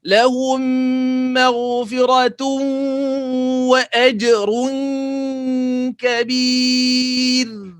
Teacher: Dia bunyi dengung lepas tapi melekat pangkal lidah kita. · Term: ikhfa